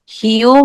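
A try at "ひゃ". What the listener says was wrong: মানে হ্যাঁ, এটা হিও না, এটা এটা বলবেন হিয়া। এটা HYA, হ্যাঁ, উচ্চারণ হবে বাংলা, বাংলায় তো হিয়া। হিয়া হিয়া, এই যে এইভাবে হি, হিয়া, হিয়া।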